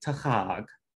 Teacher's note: the stress goes on the second syllable, and that's true generally for roots with this shape